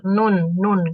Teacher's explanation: ke dalam lagi itu Nun Nun seperti itu dia itu jadi letaknya itu di ujung lidah bertemu dengan gusi dari dua gigi seri atas sedikit di depan huruf lam gitu jadi dia agak ke depan